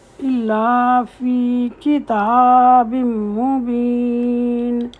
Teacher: کاف نے چھوٹی زیر کے ساتھ اور تا لمبی آواز سے بولا جائے گا، فتح شبائی ہے اس میں۔